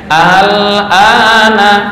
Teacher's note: Nah, ini prakteknya al-ana, bukan aa. Kalau aa jelas hamzah nih. Tapi kalau al-ana, alif bukan, hamzah bukan. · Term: tashil